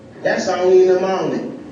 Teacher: the R sound in the word morning was eliminated, and so that is another characteristic of Black English